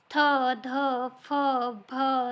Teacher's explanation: ज्या व्यंजनामध्ये ह महाप्राणाची छटा असते म्हणजे ह महाप्राण जो आहे त्याच्यामध्ये मिसळले लेला असतो त्या व्यंजन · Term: महाप्राण व्यंजन